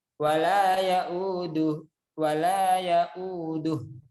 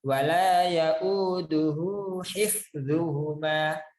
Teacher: Nah, tidak dibaca matnya karena wakaf. Tapi kalau disambung hu-nya dibaca, matnya dimunculkan. Jadinya 2 harokat.